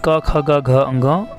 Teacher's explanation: जब हम इन वर्णों का उच्चारण करते हैं तो ये वर्ण कंठ का स्पर्श करते हैं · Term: कंठस्थ